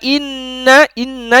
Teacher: Inna ditahan karena dia gunnah.